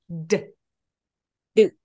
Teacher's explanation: 근데 방금 저한테 드라고 의 소리가 한국어의 의 음, 소리가 들어가 있는 느낌이 들어서 디귿만 발음하는 것처럼 한번 해볼게요. 혀가 입천장 앞쪽에 아마 닿아 있을 거예요. 그래서 그냥 이게 아니라 뜨, 뜨 하면서 마음속으로 으이라는 소리를 그냥 머물고 있다가 터져내시면 돼요.